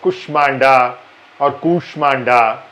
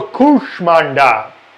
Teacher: pronounce this as kushmanda or kushmanda neither of it is right it is ku the big ooh and it's not sure but sure with the tongue curled upwards